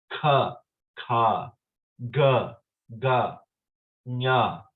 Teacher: the first letters of Sanskrit are called the gutturals. They start in the lower part.